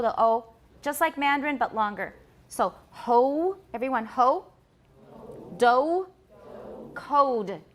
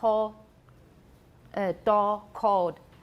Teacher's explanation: In American English, it's close to O, but it is a diphthong. It's not just O.